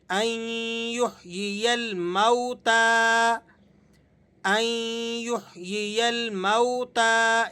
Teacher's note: اس واو کو آپ نے نہیں کھینچنا اس لیے کہ یہ واو لین ہے، نرمی کے ساتھ، اور جلدی سے آپ نے اس کو پڑھ دینا ہے۔